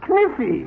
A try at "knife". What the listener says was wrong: No, the word is knife. K is the silent letter. K is always silent in front of N.